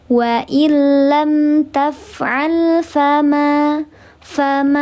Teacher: Fathah menghadapi alif dibaca panjang dua harakat. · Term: mad thobi'i